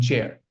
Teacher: So the T plus this elongated S combined together makes the ch sound. It's an unvoiced consonant.